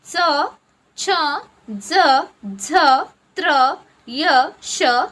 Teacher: जिभेचे पाते कठोर तालूला लावून ज्या वर्णांचा उच्चार होतो त्यांना तालाव्य वर्ण असे म्हणतात.